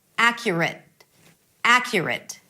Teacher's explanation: Round your lips for the R, and then there is a schwa and a T. Whether you hold it or whether you release it, it doesn't matter right now.